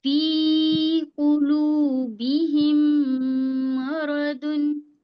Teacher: फी को खींचेंगे हम, काफ को नहीं खींचेंगे, फिर लू को खींचेंगे।